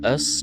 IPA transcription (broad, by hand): əs